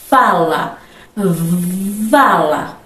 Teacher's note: F e V são consoantes fricativas labiodentais